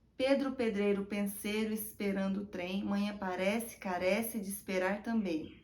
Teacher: na repetição dos fonemas sibilantes s, z e sh